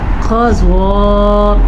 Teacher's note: اذا نرمی کے ساتھ زال کو پڑھنا ہے، الف مدہ کے ساتھ پڑھنا ہے. قضا قاف کو پر پڑھنا ہے، زواد کو پر پڑھنا ہے کیونکہ قاف اور زواد حروف مستعلیہ میں شامل ہیں. مد کو 2.5 سیکنڈ تک کھینچ کے پڑھنا ہے.